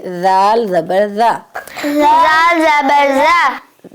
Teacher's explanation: जुबान की नौक लगाएंगे सामने वाले ऊपर के दांतों के किनारे से